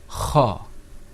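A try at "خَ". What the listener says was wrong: Open your mouth a little bit more.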